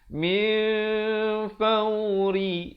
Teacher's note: Yang betulnya min fauri, ri di sini menjadi nipis. Rihim. Dan kemudian di situ kita jumpa rihim idhar syafawi, mim mati yang ada tanda mati, jangan dipanjangkan, sempurnakan saja bunyi him, bukan him tetapi him ya.